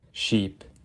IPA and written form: ʃip (sheep)